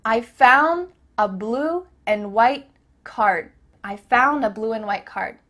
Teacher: Here the word and is being reduced. Just cut off that final D sound.